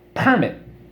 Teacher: accent is on the first syllable which is a permit